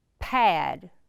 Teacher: you kind of do a little puff of air